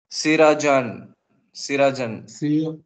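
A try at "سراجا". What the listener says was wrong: Sirajan. Okay, if you were to stop. No. With the fathatain, it is unique. Will you read the alif now? Siraja.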